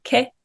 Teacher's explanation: consonant vowel followed by a glottal stop